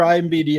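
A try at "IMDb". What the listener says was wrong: You're saying that wrong. You've done that twice now. You're saying IMBD.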